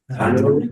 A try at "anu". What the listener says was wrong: Not Anu. Okay, R would be a long A. Right? This is short A.